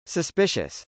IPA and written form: səspˈɪʃəs (suspicious)